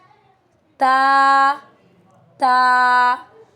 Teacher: जुबान की नोक ऊपर के दांतों के मसूड़ों से जब लगती है तब हमारे पास ता अदा होता है। Tip of the tongue touch gums of upper front teeth its light letter.